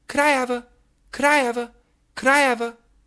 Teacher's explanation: Here, the have V connects into the a.